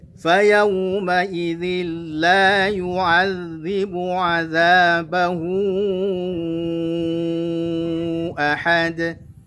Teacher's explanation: azabahu ya hu-nya dibaca dengan 4 harokat karena matsilah tawil atau matsilah kubra